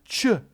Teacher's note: The ch sound is just the T sound followed by the sh sound. Ch. The hard J sound is just a voiced version of this.